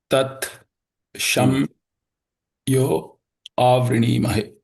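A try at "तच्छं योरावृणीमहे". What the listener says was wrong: Because there is a Ra there, so there should be something you missed, no?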